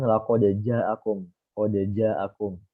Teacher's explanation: oh dal kan dia di ujung lidah ke pangkal gigi atas